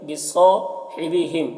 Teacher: ماں میں مدہ ہے، ایک الف کے برابر کھینچیں گے۔ بصاحبہم، صاد حروف مستعلیہ میں سے پر پڑھیں گے